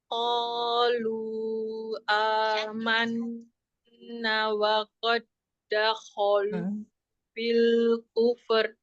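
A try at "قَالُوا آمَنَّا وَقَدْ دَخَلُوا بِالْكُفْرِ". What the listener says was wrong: Nah, nanya nggak Umi panjangin, cuma menahan nun bertasdid, tapi langsung amanna wa qad. Jadi nanya harus setelah ditahan gunahnya, kalau yang ini ada mat ya, coba.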